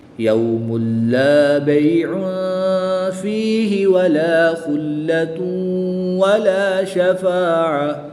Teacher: دو پیش کی تنوین کے بعد لام حرف مرمون میں سے ہے تو یہاں پر ادغام بلا غنہ ہوگا، بغیر غنہ کے ادغام کریں گے۔